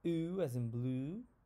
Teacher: that's a back upper sound